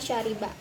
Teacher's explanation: Tidak bersuara, font sya ini tidak bersuara karena tidak adanya hambatan pada pita suara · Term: bunyi mati